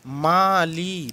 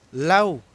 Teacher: হয়ে যাচ্ছে আ এর সাথে লাউ একত্র উচ্চারিত হয়ে যাচ্ছে অর্থাৎ আ ধ্বনি এই আটা হচ্ছে পূর্ণ স্বরধ্বনি এবং উটা হচ্ছে অর্ধস্বরধ্বনি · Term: যৌগিক স্বরধ্বনির